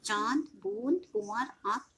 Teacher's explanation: अनुनासिक के उच्चारण में वायु नाक और मुख दोनों से निकलती